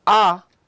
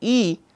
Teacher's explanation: the a is low in terms of jaw movement and e e is high movement to the jaw